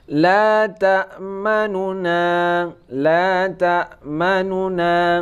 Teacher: cara membacanya seakan-akan ada dua huruf nun. Tidak berdengung. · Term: cara membaca yang kedua